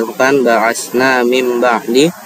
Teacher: nun sukun bertemu dengan huruf ba maka ee kita harus membacanya dengung dan mensarkan sama seperti huruf mim. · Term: iqlab